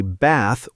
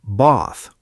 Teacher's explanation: Like in the word bath? Yes, Americans say bath with a short A sound. British people say bath with a long A. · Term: the A sound